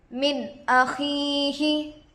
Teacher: نون ساکن کے بعد حروف حلقی سے حمزہ آ کر ہے، اس لیے نون کو ظاہر کر کے بغیر غنہ کے جلد پڑھیں گے، اس کو اظہار کہتے ہیں۔